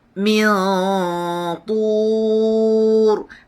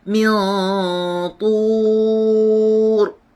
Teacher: Dah ready nak muncungkan bibir kita sebab dia berbaris di dhammah, iaitu baris di depan.